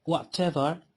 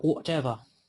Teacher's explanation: he produces the unrounded back open vowel ah instead of the rounded back open vowel oh